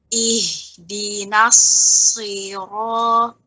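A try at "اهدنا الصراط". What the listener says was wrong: Ya, itu itu pangkal lidah nggak naik itu ya. Karena pada ujung aja itu. Ulangin.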